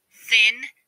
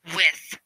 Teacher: Two fricative sounds are interdental sounds, which are made with the tongue between the teeth. The th is a voiceless fricative consonant sound. The sound for TH is th, as in the beginning of thin and the end of with.